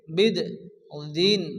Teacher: এখানে দালের উপরে কি আসছে তাসরিদ এজন্য দালকে আমরা দুবার উচ্চারণ করব প্রথমত বাদ সঙ্গে সঙ্গে যুক্ত হবে বাদান জের বিদ বিদ দিন